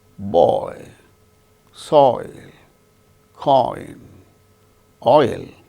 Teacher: another diphthong or double vowel sound, oi, starts with O, ends with E